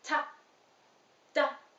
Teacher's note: T and D are made with the tip of your tongue and your tooth ridge, which is right on the roof of your mouth, right behind your front teeth. You place the tip of your tongue right there behind your front teeth.